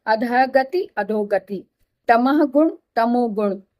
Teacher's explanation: विसर्ग लगा हुआ है, विसर्ग प्लस ग हो तब भी ओ हो जाएगा। अभी आपने यहाँ पे पढ़ा था ना कि किसी भी वर्ग का तीसरा, चौथा और पांचवा वर्ण हो, तो ये वर्ग का तीसरा वर्ण है ग, तो विसर्ग प्लस ग है, तो इसका भी ओ हो जाएगा। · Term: विसर्ग का ओ